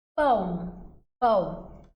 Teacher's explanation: a gente tem aqui Um ditongo nasal